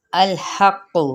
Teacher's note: لام کو ہلانا نہیں ہے، قاف کو پر بھی کرنا ہے، اور تشدید کے ساتھ اس کی پیش کو لمبا نہیں کرنا